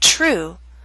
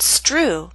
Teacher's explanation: when you release the air there should be a puff of air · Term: true T